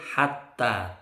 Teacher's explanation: taknya bertasydid panjang 2 ketukan